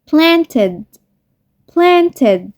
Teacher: The verb plant ends in t sound. When we add ed to this verb, the ed make the sound id.